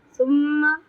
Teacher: मीम मुशद्दद है, यहाँ पे गुन्ना करेंगे एक अलिफ बराबर